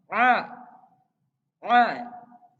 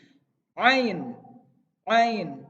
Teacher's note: Kalau ain itu harus lebih ada penekanan di bagian tenggorokannya. Harus ada ditekan.